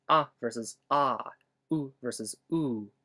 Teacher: there are long and short versions of each one, and they only differ in how long you say them. Ah versus ah, oo versus oo, etc.